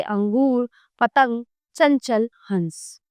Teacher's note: अनुस्वार का उच्चारण करते समय श्वास केवल नाक से निकलती है